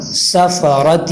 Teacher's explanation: سین کے اندر سیٹی کی آواز ہونی چاہیے